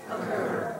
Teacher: it has a short indistinct vowel sound like the A in alone or the O in occur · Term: schwa